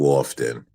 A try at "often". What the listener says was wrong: say often. The better way to pronounce it, the higher class English is often. Don't pronounce the T.